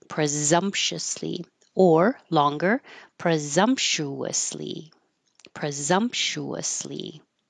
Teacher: it's pretty much the same but the S now sounds like a z